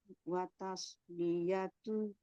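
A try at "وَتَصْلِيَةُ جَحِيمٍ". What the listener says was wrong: ta enggak boleh tebal yang tebal itu shadnya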